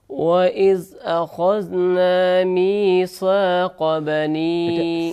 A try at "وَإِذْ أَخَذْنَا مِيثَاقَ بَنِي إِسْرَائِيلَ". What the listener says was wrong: سا اس کو باریک پڑھتے ہیں، سا یہ نہیں پڑھنا، دوبارہ پڑھیے۔